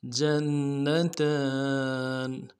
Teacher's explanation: جیم کو نون کے ساتھ ملانا ہے، نون کے اوپر تشدید زور دیں گے ، اگلے نون کو نرمی سے ادا کرنا ہے، تا کے